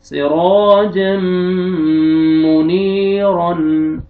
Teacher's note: नून को अपने खींचना है, रा को अपने मोटा करके पढ़ना है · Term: रा को मोटा